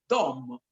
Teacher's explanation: La D è una consonante retroflessa, vale a dire si pronuncia con la lingua rotolata all'indietro, Dom, quindi dà un suono molto particolare.